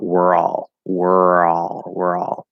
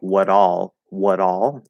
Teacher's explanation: you can activate that er vowel into a consonant er and connect it to ah